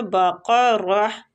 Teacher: ساکنہ کو چھپائیں گے اخفا کے ساتھ، تذبحو بقرہ۔ اب دیکھیں بقرہ پہ ہم رک رہے ہیں تو اس لیے ہم تا کی آواز کو ہا میں تبدیل کر رہے ہیں